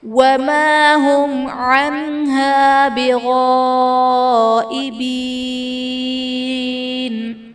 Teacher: وَمَا هُمْ عَنْهَا بِغَائِبِينَ، وَمَا هُمْ عَنْهَا میں میم ساکن کے بعد حرف با اور میم کے علاوہ عین ہے، تو یہاں پر اظہار شفوی کا قاعدہ ہوگا، یعنی میم ساکن میں ہم غنہ نہیں کریں گے